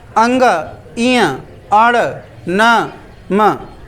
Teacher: इनका उच्चारण करने के लिए श्वास को अंशतः नासिका से बाहर निकालना पड़ता है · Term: अनुनासिक वर्ण